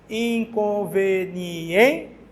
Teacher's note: A mais forte é no em, que é a penúltima sílaba, então ela é uma paroxítona